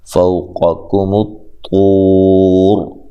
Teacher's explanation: را کو موٹا ادا کریں گے وقف کی صورت میں بھی اور ملانے کی صورت میں بھی